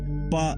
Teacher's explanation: लेकिन जब यही एयर कहीं रुक जाती है जैसे प बोलते वक्त लिप्स बंद हो जाते हैं।